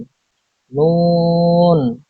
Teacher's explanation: জিহ্বার আগা তার বরাবর উপরে তালুর সঙ্গে লাগিয়ে উচ্চারিত হয় নুন